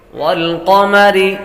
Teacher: را کو بریک پڑھیں گے، را کے نیچے زیر ہو تو را کو بریک پڑتی ہے